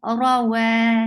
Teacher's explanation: Make sure you circle your lips for wow, because articulation point of wow is circling your lips. Ra, wa, si, short.